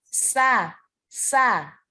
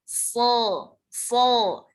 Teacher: Nah, kemudian so itu diangkat pangkal lidahnya. Jadi bedanya sin dan so itu ya. Hanya diangkat pangkal lidahnya.